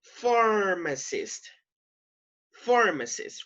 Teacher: So the stress goes on the first syllable